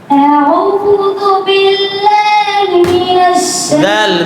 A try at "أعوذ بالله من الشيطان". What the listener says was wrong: দাল পাতলা আউযু, জিহ্বা খুব ভালো করে লাগাতে হবে, জিহ্বার আগা উপরের দুই দাঁতের আগার সঙ্গে খুব ভালো করে লাগাতে হবে। আউযু এরকম করার দরকার নাই তো, ঠোঁট একই রকম থাকবে, দুইটাই পেশ একই রকম থাকবে, ভেতরে কাজ চলবে। আউযু আউযু বিল আউযু যু আউযু